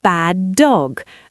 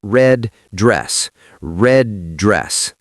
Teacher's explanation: You hold the position of the D, pause for a split second to build pressure, and then release it onto the second word.